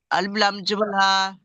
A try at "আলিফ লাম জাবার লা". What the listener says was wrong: জি না, প্রথম লাম আছে।